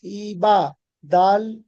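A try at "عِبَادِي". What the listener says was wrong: দি নয়, দি। ইয়া মাদ্দা একালি টান দিতে হবে। ইবাদি।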